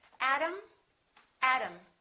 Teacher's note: T between two vowels sounds exactly like the D.